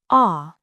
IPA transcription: ɑː